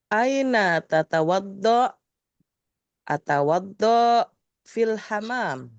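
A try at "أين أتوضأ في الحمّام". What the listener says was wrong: Fil hammam bertasydid. Ini bukan do-nya tidak panjang. Ya, atawaddo atau atawaddou.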